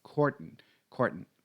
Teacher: Pay attention to the pronunciation of that last syllable. It's cordon, cordon, pronounced with a schwa.